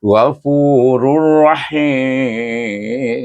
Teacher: Tanwin bertemu dengan ra dengan idgham bila gunnah. Huruf ra adalah huruf idgham tapi tak boleh didengungkan bacaannya.